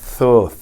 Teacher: os Teimanim, eles lêem essa Torá, com o Taf, eles lêem TH, Tho.